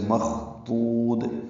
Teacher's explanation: خا حروف ماموسہ میں سے، اس میں ہمس ہوگا. ضاد میں صفت استطالت بھی ہے، اور اس میں زبان کا اکثر حصہ اوپر تالو سے چمٹ بھی جاتا ہے. اور یہ پر ہے، دو وہ مدہ ہے، پیش کے بعد وہ ساکن آنے کی وجہ سے مخضود.